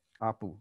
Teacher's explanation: We would expect apu with a glottal stop